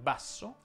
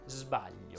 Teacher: significa cioè che hanno lo stesso luogo e modo di articolazione quello che cambia è semplicemente l'utilizzo o meno delle corde vocali · sulla s che può essere sorda come per esempio in basso oppure sonora come per esempio in sbaglio